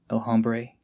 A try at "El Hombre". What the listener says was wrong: I don't think you pronounced the H. El Hombre.